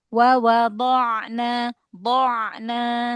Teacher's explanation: Bainiyah pada ainnya dialirkan lagi biar tidak seperti hamzah.